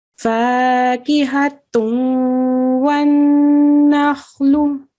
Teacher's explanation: So you can see I held on to the sound of the noon for 2 seconds. So that's a partial idgham where you can hear the sound.